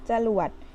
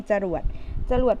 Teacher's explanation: เวลาอ่านออกเสียงจะออกเสียงอะแค่กึ่งเสียงไม่ออกเต็มเสียงนะคะ